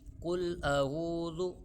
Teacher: قل اعوذ، آگے ہے ذال، زا نہیں پڑھنا ہم نے، اس کو ذال پڑھنا ہے، زا وہ سختی کے ساتھ تا ہوتا ہے، وہ والا زا نہیں ہے، ہم ذال پڑھیں گے۔